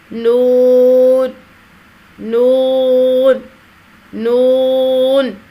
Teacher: اس حرف کی آواز 3 حرفی ہے، نون واو نون، 2 گنا کھینچ کر ادا کیا جائے گا۔ زبان کے باریک کناروں کو اوپر والے دانتوں کے مسوڑوں سے لگا کر ہونٹوں کو چونچ کی مانند گول کرتے ہوئے باریک آواز میں پڑھیں گے۔ اس کا نقشہ دیکھیں، نون، چونچ کی طرح ہونٹوں کو گول کرتے ہوئے نون، اور اندر سے زبان کا اس طرح سے لگا کر دانتوں کے مسوڑوں سے ادائیگی ہوگی۔